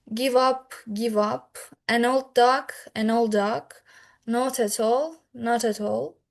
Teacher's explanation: It often occurs when one words end with a consonant and the next starts with a vowel. The final consonant sounds like it moves to the next word. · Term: Linking